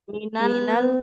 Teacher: Jadi lidahnya tetap nempel ke gusi biar lamnya nggak memantul.